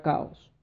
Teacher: hay una separación entre estas dos vocales que son fuertes o abiertas